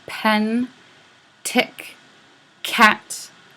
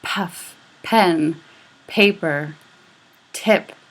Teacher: So when you're saying pen, tick, cat, all of those, there's a big puff of air. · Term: aspirated